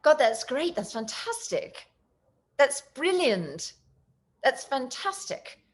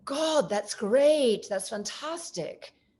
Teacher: In England, they will put their emotions on the consonant.